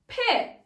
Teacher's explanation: Çıkarken patlıyor ve dudaklar birbirine çarpıyor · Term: patlamalıdır